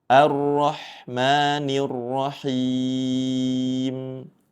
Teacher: A di awal dibaca tipis jangan sampai ikut dibaca tebal.